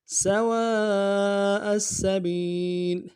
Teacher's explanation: کے اوپر مدہ عارض ہے، دو الف دال میں کھینچیں گے، حمزہ کو سین کے ساتھ ملانا ہے، سین کے اوپر تشدید زور دیں گے